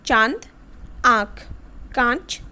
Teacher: अब बात करते हैं अनुनासिक, जिसको आप लोग संध बिंदु कहते हो। इसका उच्चारण नासिका और कंठ के द्वारा होता है